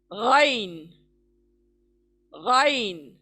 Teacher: गाइन यानी जहां पे गार्गल करते हैं वहां से अदा होगा